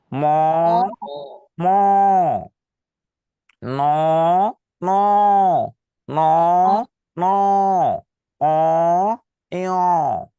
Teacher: ম, ম উচ্চারণের সময় নাক দিয়ে বাতাস বের হবে। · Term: নাসিক্য বর্ণ